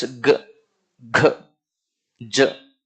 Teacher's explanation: Whenever you produce g, g, j, vocal folds have to vibrate.